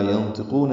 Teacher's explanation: ینطقون میں نون ساکن کے بعد طاء کی وجہ سے اخفا ہے، طاء پر پڑھیں گے، قاف بھی پر پڑھیں گے